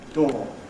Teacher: we don't make a difference between / ɔə / and / ɔː / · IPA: / dɔː /